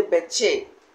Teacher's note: When you say beche, that's when you are trying to place stress on the che to become che.